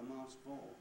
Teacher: i didn't say the k that last time didn't sound awful to me in the context